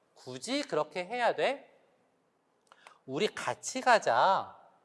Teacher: 디귿이 당겨지니까 츠 이런 소리, 즈 이런 소리로 당겨지거든요. 그랬을 때 그 부분이 경국의 딱딱한 입 천장이어서 굳이 같이 라고 발음하는 것입니다.